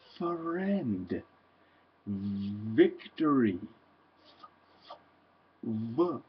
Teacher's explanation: Those are called labio-dental sounds because your bottom lip touches your upper teeth.